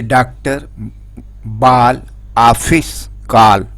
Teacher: ओ और आ के बीच की ध्वनि है।